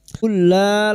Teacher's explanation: Qul la lam sukun bertemu lam, 2 huruf yang sama, yang pertama sukun idgham mislain masuk pada huruf lam berikutnya tanpa mendengung